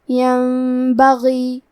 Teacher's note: قلب کا معنی ہے بدل دینا، تو ہم نون ساکن کو میم میں بدل کے غنہ کے ساتھ یہ حکم کو ادا کریں گے. · غین کی ادائیگی حلق کے اوپر والے حصے سے ہے. غین حروف تفخیم میں سے ہے تو ہم یہ حرف کو بھاری آواز میں پڑھیں گے.